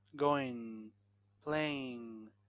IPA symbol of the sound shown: ŋ